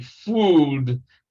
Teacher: Again, it is D, fooled, because L is a voiced consonant.